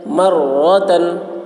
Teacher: رائے مشددہ کے اوپر زبر ہے اس لیے را کو پر پڑھیں گے